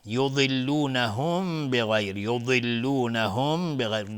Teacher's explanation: ضاد اینجا از حروف استعلاست، غلیظ تلفظ میشه. میم ساکن بعدش با اخفای شفوی.